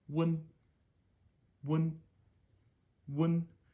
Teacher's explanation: So W to N, wun, wun, wun. It's very short. Everything happens right in the front of my mouth.